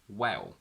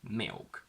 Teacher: some British accents get a little bit lazy about it. For example, Cockney, and they transform the dark L into a sort of O.